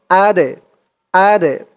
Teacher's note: দালটা কলক হরফ ধাক্কা দিয়ে পড়তে হবে